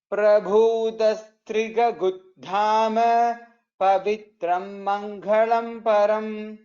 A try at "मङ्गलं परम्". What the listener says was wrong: Mangalam. There is no mahaprana there. Mangalam param.